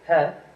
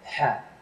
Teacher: It comes more from the back of your throat than a normal H. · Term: hard H sound